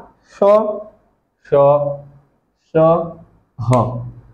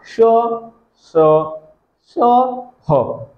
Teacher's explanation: ऐसा व्यंजन या व्यंजन का ऐसा प्रकार जिसका उच्चारण करते समय बहुत तेजी से हवा गर्म निकले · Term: उष्म व्यंजन